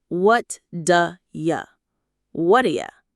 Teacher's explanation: The word are gets reduced to just a little sound, and you becomes ya. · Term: reductions